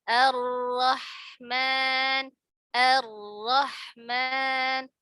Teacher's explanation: tegangkan tegangkan lidahnya naikkan pangkal lidah nya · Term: ro yang tafkhim